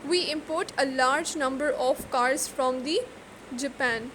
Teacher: Here it is verb, so stress is on the last syllable, that is port.